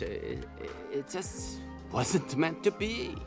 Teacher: Finally, he emphasizes the verb be. We would call it contrastive stress.